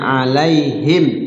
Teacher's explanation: mimnya terbaca jelas, nggak boleh samar di bibir, ya, namanya idhar syafawi.